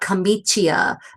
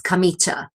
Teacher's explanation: Um, so yeah, anytime you have that I after a c or a g in Italian, the i is not pronounced. The i softens that sound, the the consonant that precedes it.